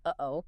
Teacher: However, the human throat despises something called a glottle stop, which is the harsh abrupt closing and opening of the vocal cords, like the sudden pause in the middle of the word uh-oh. >> It's basically an interruption of the airflow. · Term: glottal stop